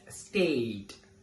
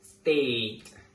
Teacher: the A sound is a long monophthong produced by raising your tongue towards the mid-front of your mouth and keep your lips unrounded so that there's no movement of the tongue during the pronunciation.